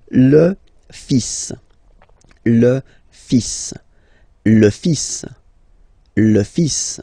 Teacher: even if you've got this L, well, basically you don't pronounce it, and then strangely you pronounce the final S.